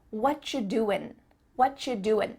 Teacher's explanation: at the end of the word doing, that G also gets cut out